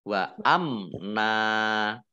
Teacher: mim sukun bertemu dengan huruf nun, bacaan izhar syafawi dibaca jelas.